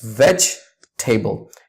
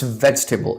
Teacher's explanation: You see, the E is silent in between. So it's veg-table.